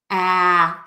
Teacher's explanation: my mouth is really wide open and the tip of my tongue is low in my mouth and the back of my tongue is kind of pulled up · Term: wide open ah